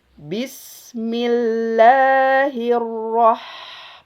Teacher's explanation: Bis ada sin di situ berharokat sukun, maka dia harus ditahan satu harokat. Karena dia punya sifat rokhwah atau mengalir dari segi suara.